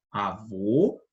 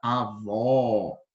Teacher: a gente chama de timbre fechado, com a boca meio fechada